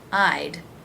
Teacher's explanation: In the word I'd, it's simply a D sound at the end of the I as in by diphthong